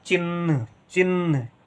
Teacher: ध्यान दें च के साथ इ का उच्चारण हो रहा है लेकिन कम देर के लिए हो रहा है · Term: छोटी इ की मात्रा